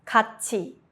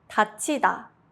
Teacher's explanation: When 디귿 or 티읕 받침 meet 이 or 히, they change into 지읒 or 치읒. This is called 구개음화, palatalization, and it makes the sound smoother.